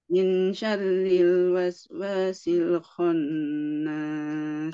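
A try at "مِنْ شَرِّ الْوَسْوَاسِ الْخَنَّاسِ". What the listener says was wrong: Nah, ini dibacanya samar. Maksud samar apa? Dia tidak jelas huruf nunnya. Jadi tidak min, tapi dia min.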